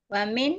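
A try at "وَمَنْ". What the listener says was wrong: Maksud jangan dibaca min, bukan huruf jar, setelahnya mudhari kan Om? Majazum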